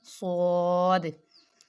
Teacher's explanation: جب اس کو ادا کریں تو سیٹی کی آواز بھی پیدا ہوتی ہے ، صاد۔ زود، زود بھی موٹے حروف میں سے ہے، زبان